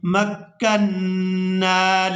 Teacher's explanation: نون مشدد پر غنہ کریں گے